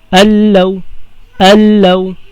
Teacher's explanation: Idgham bila gunna. Kumbaga si nun, magiging lam na siya and then walang gunna.